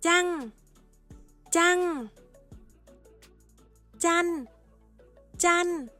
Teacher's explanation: tone của cả từ sẽ được thay đổi thành mid tone